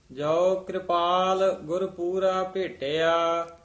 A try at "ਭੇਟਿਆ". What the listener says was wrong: ਭੇਟਿਆ ਢੱਡਾ ਨਹੀਂ ਬੋਲਣਾ। ਜੋ ਕਿਰਪਾਲ ਗੁਰ ਪੂਰਾ ਭੇਟਿਆ।